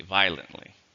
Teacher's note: it has four syllables stress in the first um but it has three if you say it quickly violently